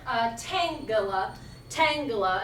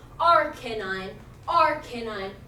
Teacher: It's a stress followed by 2 unstressed. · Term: dactyl